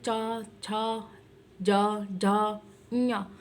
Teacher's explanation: तो आपके जो जीवा है, जबान है, वो किससे टच हो रही है, तालू से टच हो रही है। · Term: तालव्य वर्ण